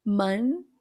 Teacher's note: Só que se eu tenho um TH logo em seguida, você já vai deixar a língua para fora no N em preparação para o TH. · para o TH, língua entre os dentes e mantém esse fluxo constante de ar. A pronúncia do N, a ponta da língua vai atrás dos dentes de cima no que a gente chama de alvéolo.